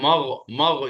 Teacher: حلق سے آواز تو غین میں نکلے گی. غین غین حلق سے نکلتا ہے